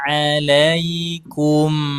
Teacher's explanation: Untuk melafadzkan idhar halqi dan idhar syafawi, ya, mim sukun dan nun sukun bertemu dengan huruf idhar, itu usahakan jangan terburu-buru, Ibu. Nikmati mim sukunnya, tapi jangan didengungkan. Contohnya, la junaha alaikum kum nggak dengung, tapi mimnya sempurna sukunnya.